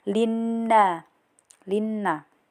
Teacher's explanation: Kemudian di sini juga terdapat hukum gunah karena di sini terdapat nun tasjid jadi baca dengung dan ditekan tiga harakat